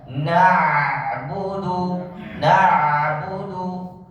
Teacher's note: perhatikan ketika membaca huruf Ain yang sukun itu lebih besar tawasudnya daripada membaca huruf yang berharakat